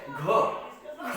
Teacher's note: महाप्राण में जैसे ख और आपका घ और इसको बोलते हुए भी अधिक वायु लगती है